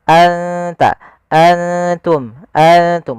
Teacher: nunnya kita samarkan ke huruf ta langsung, seakan-akan kita melafalkan huruf ta. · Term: ikhfa